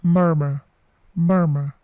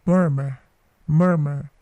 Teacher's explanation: Huruf R atau R yang terakhir itu tidak dibaca.